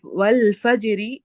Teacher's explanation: اس آخری حرف کی حرکت کو ہم پڑھتے ہیں، لیکن آواز ہماری 2/3 جو ہے وہ چلی جاتی ہے اور 1/3 پڑھتے ہیں ہم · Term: روم